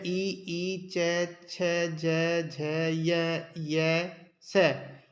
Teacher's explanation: इनका उच्चारण स्थान तालू होता है